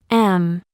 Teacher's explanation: Es decir, se juntan ambos labios mientras se produce el sonido. Y como consecuencia, se obstruye la salida natural de aire por la boca. Y se le denomina nasal, porque al estar obstruida la salida de aire por la boca, el aire será expulsado por la nariz.